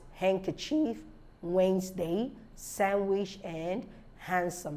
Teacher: D is not pronounced in the following common words handkerchief Wednesday sandwich and handsome so in these words they are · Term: silent D